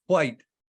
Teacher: when you do say white there actually is a bit of an H sound at the front of it